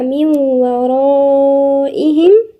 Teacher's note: هنا في نون ساكنة يبقى بعدها على طول اللي هي الواو في إدغام هنا وغنة. إدغام بغنة يبقى من ورائهم.